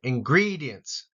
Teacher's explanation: and GRE gets the emphasis here